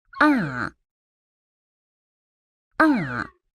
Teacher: It starts high and drops all the way down. Ah. Ah. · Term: fourth tone